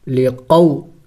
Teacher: قو حروف لین ہے، اس کو ہم نے جلد پڑھنا ہوگا